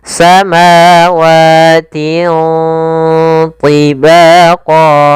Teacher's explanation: Bacaan ikhfa yaitu cara membacanya suara tanwinnya disamarkan ke huruf th · karena huruf tha huruf tebal, huruf isti dan huruf idbaq, maka ikhfanya juga ditebalkan. samawatin. Nah, langsung seakan-akan kita melafalkan huruf th, tapi tinya tetap tipis.